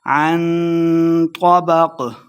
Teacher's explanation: عن طبق اخفا ہے، غنہ کر کے پڑھیں گے